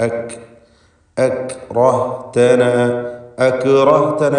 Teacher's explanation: സുക്കൂനായി തന്നെ ഉച്ചരിക്കണം. എന്നാൽ അതിൽ ഹംസ് എന്ന സിഫത്തുണ്ടാവണം. ശ്വാസത്തിൻ്റെ ചലനം, അതാണ് ഹംസ് കൊണ്ട് ഉദ്ദേശിക്കുന്നത്.